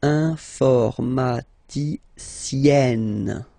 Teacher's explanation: Remember, E and then double N, or then it could be double L or double consonant here. You open your E, so it's E, informaticienne.